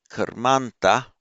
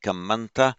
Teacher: And you make a compound noun, karmanta, in Sanskrit, and similarly in Pali, kamanta, of course, the long a in karma anta, in Sanskrit, karmanta, becomes short in Pali because it's followed by a consonant cluster, the nt.